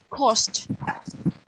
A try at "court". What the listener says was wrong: Okay, so there's no S at the end. Court.